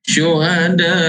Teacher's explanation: Huruf mad berjumpa dengan huruf hamzah dalam satu kalimah. Syuhada 4 atau 5 harakat. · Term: mad wajib muttasil